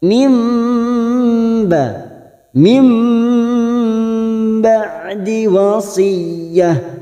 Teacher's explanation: Mim nun sukun bertemu ba, bacaan iklab. Nukar pada huruf ba. Kita dengungkan dan ditahan selama 3 harokat.